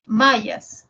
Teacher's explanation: la M es una nasal bilabial y la ya es una fricativa palatal y la S es una fricativa alveolar. Nasal, fricativa, fricativa.